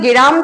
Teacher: গ এর সঙ্গে দেখতে পাচ্ছি যে একটা এ ধ্বনি চলে আসছে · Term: স্বরভক্তি